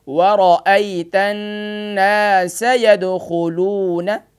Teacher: ناسا اس کو کھینچنا نہیں ہے، یدخلون اس کو کھینچنا نہیں ہے